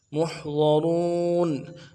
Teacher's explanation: میم کو ہا کے ساتھ ملانا ہے، ہا کو گہرے سے ادا کریں گے، ضاد کو واضح کرنا ہے، موٹا کریں گے